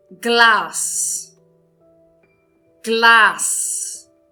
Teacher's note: verifiquem que eu estou pronunciando de uma forma longa o A